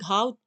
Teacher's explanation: हमारे कंठ से जो जो शब्द निकलते हैं उन्हीं में आता है घा